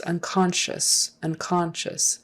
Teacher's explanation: if it were spelled s-h-u-s on the end it's unconscious unconscious accent is on the second syllable